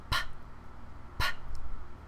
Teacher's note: P and B uses both of the lips. P is your voiceless consonant.